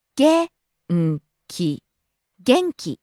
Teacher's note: falling on the second syllable N and staying low.